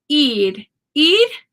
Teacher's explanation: I need once again NE I need e e is uh it might sound like I'm saying ID but really it's a flap R